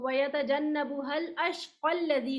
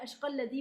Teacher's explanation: الف مدہ کا الف گرا دیا گیا، اور ملا کر پڑھنے میں یہ اشق الذی پڑھا جائے گا. جبکہ وقف کرنے کی صورت میں اپنی اصل حالت یعنی الف مدہ پر ہی وقف کیا جائے گا.